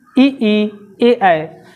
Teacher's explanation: जीभ का अगला भाग उठेगा, अग्र भाग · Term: अग्र स्वर